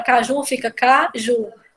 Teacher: quando a gente separa caju, fica caju. O mais forte é o ju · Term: oxítona